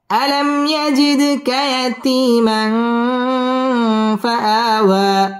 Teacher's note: ইয়াতিমা ইকফা গুন্না করে পড়তে হবে